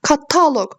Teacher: Kataloq sözündə taya düşür. Yəni ikinci hecəyə düşür. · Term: vurğu